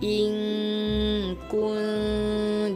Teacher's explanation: Dengung lagi ikhfa hakiki. Antara nun mati bertemu dengan kaf.